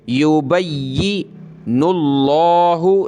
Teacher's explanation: لفظ اللہ سے پہلے نون پہ پیش ہے تو موٹا کریں گے لفظ اللہ کو